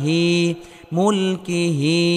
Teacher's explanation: কোন হরফের নিচে খারা জের হলে এক আলিফ পরিমাণ লম্বা করে টেনে পড়তে হবে